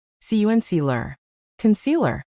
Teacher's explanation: It sounds like cun. Then we hit the middle syllable hard, C. And then another lazy sound at the end, lur.